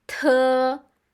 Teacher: you put a strong puff. Strong air comes out of your mouth.